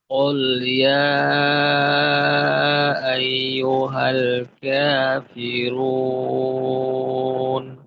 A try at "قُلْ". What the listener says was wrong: আপনার ক্ষেত্রে কফের পেশের উচ্চারণটা কিছুটা মনে হচ্ছে যেন গোলের ক্ষেত্রে একটু কমতি রয়ে গেল। তো ঠোঁটটাকে খুলে তারপর ক, কি, কু, অর্থাৎ এখানে যেন ওকার মুখে একটা আওয়াজ না হয়, এই বিষয়টা খেয়াল করবেন।